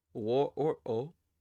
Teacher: I surrounded the W in wo with parentheses because it's often pronounced as just o.